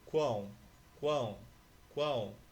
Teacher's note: o ar não só sai pela boca, sai também pelo nariz. Quando ocorre isso, você tem um tritongo nasal.